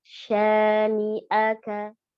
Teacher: Dari pangkal tenggorokan a, kuatkan bacanya. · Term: hamzah